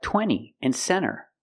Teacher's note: when you have n t between vowels you don't really hear the T